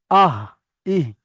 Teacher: হালাক বা কণ্ঠনালীর শুরু হতে উচ্চারিত হয় হামজা হা।